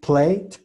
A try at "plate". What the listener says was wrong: Plate, la T más marcada.